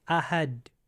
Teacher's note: He said, "Qul huwallahu ahad, ahad," and you just it goes straight into like a pause, ahad, because the D touches the top of the palate, and you just say ahad.